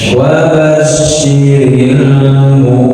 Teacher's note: Huruf syin dia tafasyi, ada angin yang menyebar di dalam mulut kita. Nah, tapi jangan sampai monyong, tidak wabasyi, wabashiril mu.